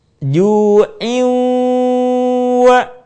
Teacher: suara kita sebagiannya masuk ke rongga hidung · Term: gunah